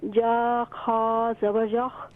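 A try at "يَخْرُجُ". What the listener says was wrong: یا کو اور خا کو صحیح طور پر ادا کریں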